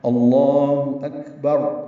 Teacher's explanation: با کو را سے ملا دیں گے، را پر پڑھیں گے وقفاً